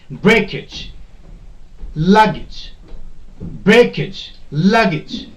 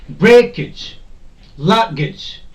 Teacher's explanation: any word ending with age the stress will not be put on this age but the part or the syllable which is before this age